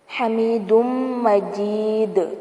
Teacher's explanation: یہاں پر تجوید کا ایک رول ہو رہا ہے، ادغام مع الغنہ کہتے ہیں اس کو. حمید مجید، اور لاسٹ میں دال کو ہلائیں گے، یہاں پر کلکلا کیا جائے گا